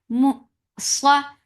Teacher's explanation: for Fatha open jaws. The sound is heavy and short.